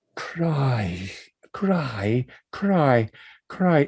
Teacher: There's a K, there's an R, there's an I vowel, which is actually a diphthong